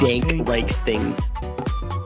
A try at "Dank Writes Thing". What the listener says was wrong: No, it's not things. It's not plural. It's singular.